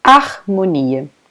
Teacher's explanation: the H in the beginning of this word, a letra H, it's completely not pronounced.